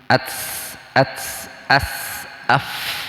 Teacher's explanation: Huruf hamas itu berdesis keluar napas.